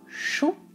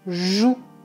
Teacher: le ch comme dans chou qui est sourd et le j comme dans joue qui est voisé